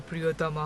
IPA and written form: priʲot̪ɔma (প্রিয়তমা)